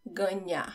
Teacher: it's not the tip of my tongue that touches the roof of my mouth it's the middle of my tongue